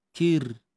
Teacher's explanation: Ra mati sebelum dia baris bawah, perlu dibaca nipis.